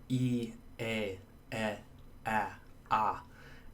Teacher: is another category these would be front of holes aligned here these are sort of the ones that are pronounced as far forward as your tongue can get